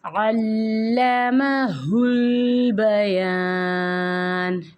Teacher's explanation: عین کو لام کے ساتھ مضبوطی سے ملا کے پڑھیں گے، اور یہاں پہ بیان میں یہاں پہ الف مد ادا کریں گے۔ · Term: تشدید